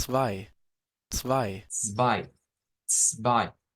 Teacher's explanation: Casi que solo se escucha la S, pero al principio está el ts, ts, está la T. Lo que pasa es que la T siempre es un sonido bien suave. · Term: sonido africano